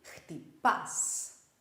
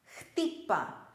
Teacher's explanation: The stress doesn't go on the end syllable, it goes on the second last syllable.